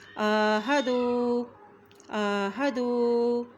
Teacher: آئین کے اوپر کھڑی زبر ہونے کی وجہ سے آئین کو ایک حرکت لمبا پڑیں گے